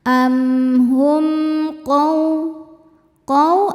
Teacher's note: Ada hukum izhar syafawi. Karena mim sukun tidak menghadapi mim ataupun ba, maka mim sukun ini dibaca dengan izhar atau jelas.